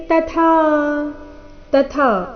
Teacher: ಇಲ್ಲಿ ಮೊದಲು ತ ಅಲ್ಪಪ್ರಾಣ ನಂತರ ಥ ಮಹಾಪ್ರಾಣ ದೀರ್ಘ